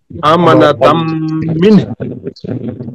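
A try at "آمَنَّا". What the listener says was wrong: আপনারও একটু টান হয়ে যাচ্ছে। তখন যখন দ্রুত বলেন তখন আবার এখানে ইকফা হয় না, ইদগাম হয় না।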